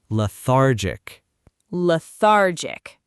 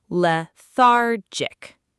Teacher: Notice the stress is on the middle syllable.